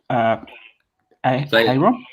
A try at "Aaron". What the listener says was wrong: I'm going to say the H is silent and it's Aaron.